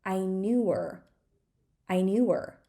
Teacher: if we skip the H in her it's going to be I knew her